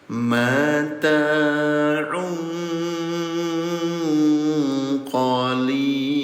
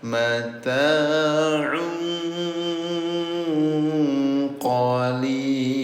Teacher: Tanwin bertemu dengan huruf qaf namanya ikhfa. Samarkan bunyi domahtainnya ya. Yang asalnya mata'un jadi samar mata'un qalil.